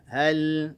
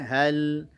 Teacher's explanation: huruf lam punya sifat tawassud, alirkan sedikit saja bunyinya hal